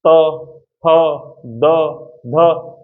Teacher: ऊपर वाले दांतों से बार बार जीभ लग रही है ना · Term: दंतय व्यंजन